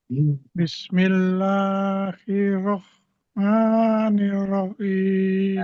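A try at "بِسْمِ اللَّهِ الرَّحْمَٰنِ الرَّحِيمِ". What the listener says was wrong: Ini jangan berhenti, bukan Rahman tapi Rah. Karena ini hams mengalir. Jadi dia nggak berhenti, dia mengalir. Rah. Nggak, jadi mengalir.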